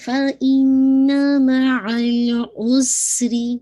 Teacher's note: سین کی ساؤنڈ جسے کہا جائے سیٹی واضح ہو